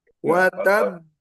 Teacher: qalqalah bertasdid di akhir maka watab watab agak tertahan sedikit.